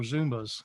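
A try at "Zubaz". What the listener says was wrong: There's no M in it. It's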